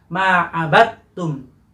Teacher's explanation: Abadtum masalahnya, tetapi dal dilebur ke huruf ta. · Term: idgham